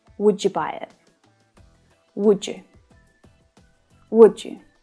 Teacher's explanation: There's also no j in you either, right? So the d at the end of the word would can link to the y at the start of you. But when we do this, it creates a new sound, the j sound. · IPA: /dʒ/